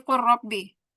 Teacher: lamnya masuk ke ro, jadi kul robbi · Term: idgham mutaqoriban